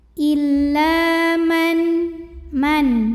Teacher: illa La Di sini ada hukum tajwid namanya thii dahiri karena ada Alif yang sebelumnya baris baris fathah ya maka cara bacanya huruf lam dipanjangkan dua harakat